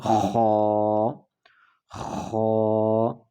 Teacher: حلق کا وہ حصہ جو منہ کے قریب ہے اس سے ادا ہوتا ہے